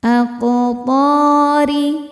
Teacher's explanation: huruf ro dibaca secara tarqik karena berharakat kasrah. Dibacanya tipis.